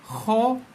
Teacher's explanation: Huruf kho bunyi yang keluar daripada kita punya hujung leher ni.